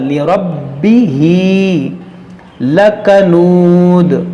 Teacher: را کو موٹا کریں گے اور اس کو خوب جماؤ کے ساتھ